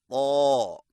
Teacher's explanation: زبان کی نوک کو سامنے والے اوپر کے 2 دانتوں کی جڑ سے لگائیں اور زبان کی جڑ کو تالو کی طرف بلند کریں